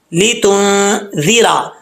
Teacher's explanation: لام کے نیچے زیر ہے، اس کو لے نہیں پڑھنا، لام زیر لی ہوتا ہے